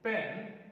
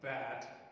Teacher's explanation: initial sound in the word pen is voiceless and initial sound in the word bad is voiced